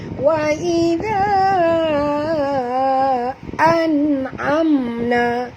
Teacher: zal sini kena panjang tuan-puan, kerana alif mat ini bertemu dengan hamzah. Jadi mat jaiz munfasil, 4 hingga 5 harakat panjangnya.